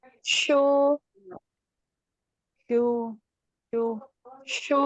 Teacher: tengah lidah yang naik ke langit atas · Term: shin